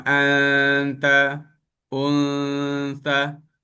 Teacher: Dia dengung. Dia pergi ke makhraj huruf nun. Tapi dia tidak melekat ke hujung lidah tu. Dia diapungkan. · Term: ikhfa